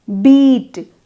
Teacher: You produce the E of beat with the front blade of your tongue raised toward your palate